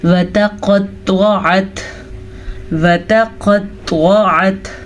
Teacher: قاف موٹا پڑا جاتا ہے، طوا موٹا پڑا جاتا ہے، یہ دونوں حروف مستعلیہ میں سے ہیں